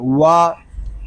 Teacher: واو دونوں ہونٹوں کی گلائی سے ادا ہوتا ہے. واو کو ادا کرتے وقت اول آخر ہونٹ ہمارے گول ہوں گے.